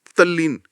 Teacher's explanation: कमजोर त को सीधे ल में बदल देता है। परिणाम होता है तल्लीन।